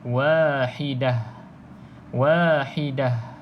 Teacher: Tapi kalau nak berhenti pada perkataan Wahidah pastikan huruf ta ni ta bulat ta marbutah ni diberhentikan dengan bunyi bunyi ha